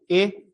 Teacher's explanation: ए बना किससे है? अ और इ से। तो उच्चारण स्थान भी इन दोनों के समान होगा। है ना? कंठ तालु।